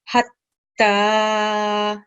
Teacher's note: we have ta mashaddat, so emphasize and press down on the sound. And then we have letter ta that carries a sukoon.